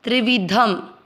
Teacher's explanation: दूसरा चरण गुण, ण में मिक्स किया गुण, त के साथ आधा सतस गुण तस। त्रिवी दोनों मात्रा छोटी लंबा नहीं खींचना है। ध में मिक्स करते हुए शब्द पूरा होने के बाद जो अनुस्वार है उसको साथ में पढ़ा जाएगा धम, त्रिविधम।